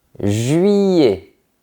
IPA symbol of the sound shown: ij